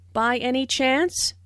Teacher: notice the rising intonation which is used in yes no questions to confirm that something is true